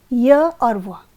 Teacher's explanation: श्रेणी में आते हैं अर्ध स्वर व्यंजन इनके उच्चारण के समय अवयव को रोकने के लिए ऊपर तो उठता है किंतु इतना अधिक नहीं कि वायु उनसे रगड़ खाकर निकले